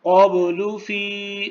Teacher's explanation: قب با کے اوپر قلقلہ ہے